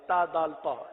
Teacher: زبان کی نوک اور اوپر کے دانتوں کی جڑ سے یہ حروف ادا ہوتے ہیں، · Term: حروف نطعیہ